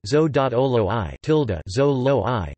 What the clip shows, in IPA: ˈzo.oloːɡiɒ ~ ˈzoːloːɡiɒ